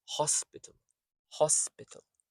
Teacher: Notice that these unstressed bits turn into a quick schwa sound, a very quick soft sound. So you have the full vowel and then you have the half vowel, the unstressed vowel if you like. · The i in hospital is the unstressed syllable and so is the a at the end.